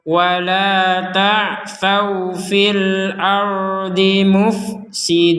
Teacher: kemudian alifnya ini karena ada bulatan kecilnya wasrobu bulatan kecil maka alifnya tidak dianggap panjang atau tidak boleh dibaca panjang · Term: tidak ada panjang